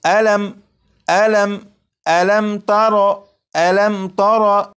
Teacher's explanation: جیسے یہاں پر آپ دیکھیں یہاں پر یہ میم ساکن ہے، میم ساکن کے بعد تا ہے، اب یہاں پر دیکھیے گا یہاں پر میم کے اوپر جزم ہے، یہ میم ساکن ہے، میم ساکن کے بعد تا ہے، جب میم ساکن کے بعد تا ہے تو اس میم ساکن میں غنہ نہیں کریں گے